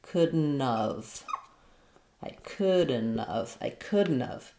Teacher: because the T of couldn't is linking to a vowel now instead of an H sound, it's going to change to more of a D. So it sounds like couldn't, with a flap here, couldn't have.